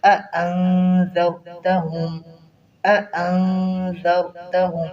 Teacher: پہلے حمزہ ہے پھر آگے حمزہ ہے، ان دونوں حمزہ کو اچھی طرح واضح کر کے پڑھیں۔